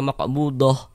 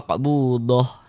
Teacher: kaidahnya huruf ta marbutah itu kalau kita berwakaf maka yang dibaca huruf ha. Kalau kita wasalkan maka yang dibaca huruf ta.